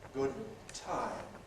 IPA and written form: ˈgʊd̚ ˈtaɪm (good time)